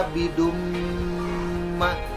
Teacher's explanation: bacaan tanwin dimasukkan kepada huruf mim dan didengungkan 2 harokat. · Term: idgham bigunnah